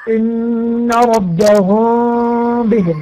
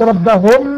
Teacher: يبقى اذا وقعت الميم بعدها باء، يعني ميم ساكنة عارية ويأتي بعدها باء متحركة، يتم إخفاء الميم عند النطق، أي لا نطبق الشفتين